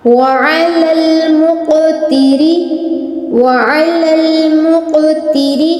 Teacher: جو قاف ہے یہاں پر تفخیم بھی کرنی ہے اور قلقلہ بھی کرنا ہے، یعنی پر بھی پڑھنا ہے اور لفظ کو ہلانا بھی ہے